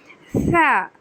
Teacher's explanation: دانتوں کے سرے سے لگانا ہے. جو دھار ہے نا دانت کی، اس وہاں پر لگانا ہے سرے سے